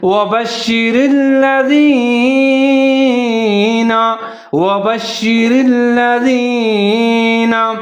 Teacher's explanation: زال کا خیال رکھنا ہے، اس کو باریک پڑھنا ہے، اس کو زا نہیں پڑھنا، سیٹی نہیں بجانی · لام اور را دونوں کو ساتھ میں ملا کے پڑھیں گے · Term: ادغام